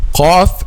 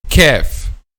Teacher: Al-Qaf is pronounced by making the back of the tongue touches a soft palate, while kaf from both soft and hard palate.